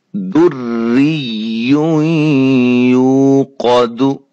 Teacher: اب یہاں را باریک ہو رہی ہے، را کے نیچے زیر ہے